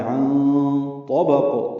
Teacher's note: عن یہ نون ساکن کے بعد طا آنے کی وجہ سے اخفا ہے. عن طبق، طا پر پڑھیں گے، با کو قاف سے ملا دیں گے، قاف ساکن پہ قلقلہ ہوگا